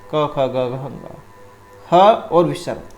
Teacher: इनका जो उच्चारण होगा वो कंठ से होता है, हमारे गले से, इसलिए इनको कंठ ध्वनि कहा गया है